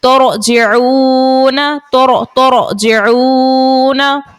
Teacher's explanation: रॉ साकिन से पहले पेश है तब भी रॉ को मोटा अदा करेंगे. रॉ साकिन से पहले पेश है, जबर हो या पेश हो, तो इस सूरत में भी रॉ को मोटा अदा करेंगे.